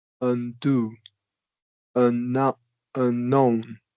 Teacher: it's always going to get some stress because it's a short U. It's not functioning like a schwa. So it's always going to get some emphasis, right?